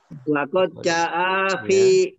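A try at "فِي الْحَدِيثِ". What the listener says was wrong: alif lam itu Pak. Fil hadisi.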